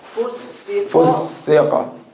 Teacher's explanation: the fa is light, but the qaf is heavy.